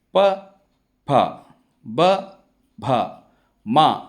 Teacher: ಓಷ್ಠ ಎಂದರೆ ತುಟಿ. ತುಟಿಗಳ ತಾಗುವಿಕೆಯಿಂದ ಉಚ್ಚರಿಸಲ್ಪಡುವಂತಹ ಅಕ್ಷರಗಳು ಇವು. ತುಟಿಯ ತಾಗುವಿಕೆ ಇಲ್ಲದೆ ಈ ಅಕ್ಷರಗಳ ಉಚ್ಚಾರಣೆ ಅಸಾಧ್ಯ. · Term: ಓಷ್ಟ್ಯ ಅಕ್ಷರಗಳು